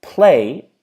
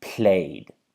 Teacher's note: And if we look at a word like play, once again, where we end in a vowel, we then know that play is going to turn into played. Our voice is going to stay on.